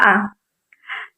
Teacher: Yang kedua yaitu vokal netral atau biasa yang disebut dengan neutral vowels, yaitu vokal yang diucapkan dengan bentuk bibir dalam posisi netral, tidak bulat tetapi juga tidak terbentang lebar